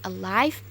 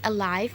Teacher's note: the sound l in the word alive is voiced alveolar lateral